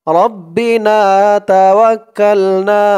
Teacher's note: এই না এক আলিফ টান, এই নাও এক আলিফ টান, জবরের পরে খালি আলিফ।